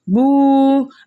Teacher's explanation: ہم نے واو مدہ کو ایک الف کی مقدار کھینچ کر پڑھا